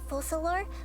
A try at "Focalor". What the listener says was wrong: Oh, Focalor, not Focalor. If you want to pronounce the C like an S, Focalor, you need a little accent mark below, on the bottom of the C. There's like a little mark hanging below the C.